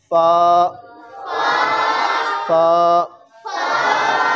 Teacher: ऊपर वाले दो दांत नीचे वाले होंठ के अंदर वाले हिस्से के साथ मिलाएंगे तो फा अदा होता है। ऊपर वाले दो दांत, ऊपर वाले दो दांत नीचे वाले होंठ के अंदर वाले हिस्से के साथ मिलाएंगे तो फा अदा होगा।